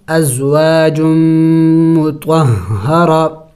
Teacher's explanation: وقف میں پھر اس گولتا کو ہا سے بدلانا ہوگا ، وقف ازواج مطہرہ، ویسے یہاں پہ وقف نہیں کرنا چاہیے